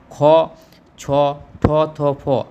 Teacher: বর্গের দ্বিতীয় বর্ণগুলি যেমন খ, ছ, ঠ, থ, ফ, আরেকবার বলছি খ, ছ, ঠ, এছাড়া রয়েছে থ এবং ফ সবসময় অঘোষ এবং মহাপ্রাণ ধ্বনি।